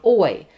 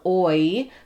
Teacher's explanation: You can see that my lips go out and then they're wide. So oi, but it's one, it's counted as one vowel sound, oi. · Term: diff thong